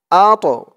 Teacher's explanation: আল্লাযী, হামজা ত জবর আত, আত, এই তটা কলকলার হরফ ধাক্কা দিয়ে পড়তে হবে